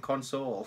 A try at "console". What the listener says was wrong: You put emphasis on the soul part.